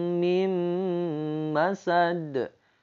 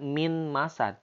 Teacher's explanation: Tanwin masuk ke mim. Kemudian nun masuk ke mim. Mim tidak min masad, tapi mim masad. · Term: idgham bigunnah